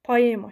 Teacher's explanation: OE saiti digər sait qoşaqlarla fərqli olaraq A kimi tələffüz edilir.